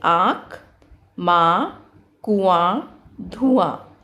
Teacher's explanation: अनुनासिक का उच्चारण करते समय मुख से अधिक व नाक से कम आवाज़ आती है।